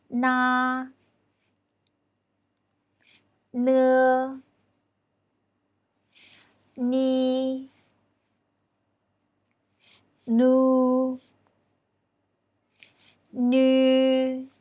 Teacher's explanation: Ooh, can you feel vibration here? Yes, n is a voiced consonant.